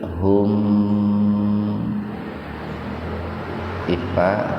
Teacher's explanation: Nama mad tabi'i alif hum ifa idhar sapawi mimati ketemu fa, jadi betul-betul dibaca jelas, mimnya dibaca jelas di bibir